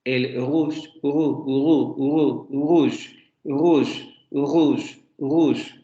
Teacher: se articula en la zona uvular, solamente que en este caso tendría una articulación aproximante fricativa. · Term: aproximante fricativo uvular sonoro